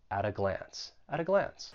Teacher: I'm going to pronounce it with a flap T and then I will link it with the vowel sound